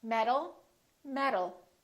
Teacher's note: These two sounds sound exactly the same because the T changes into a D when it's between two vowels.